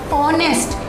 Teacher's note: In this word honest, H is silent.